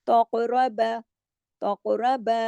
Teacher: تقربا کلکلا ہوگا اس لیے کہ ہلا کے پڑھا جائے گا کیونکہ یہ جزم کے ساتھ ہے · را اس کے ساتھ موٹا پڑھا جائے گا کیونکہ را کنڈیشنل ہے، را پہ زبر ہے